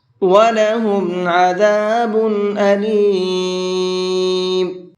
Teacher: یہاں تنوین کے اندر اظہار کر کے پڑھیں گے، یعنی صاف صاف پڑھیں گے، یہاں پر غنہ اخفا نہیں کریں گے اس لیے کہ تنوین کے بعد میں حمزہ ہے اور حمزہ اظہار کے حرفوں میں سے ہے۔